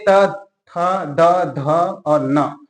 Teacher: ऐसे वर्ण है जो हमारा जीभ है वह दांतों को स्पर्श करता है इस वजह से इसको बोला जाता है क्या गंतव्य व्यंजन याद